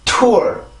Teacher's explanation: 강세로 올라가기 위한 준비 동작이 필요하기 때문에 공기가 강해질 수밖에 없는 거죠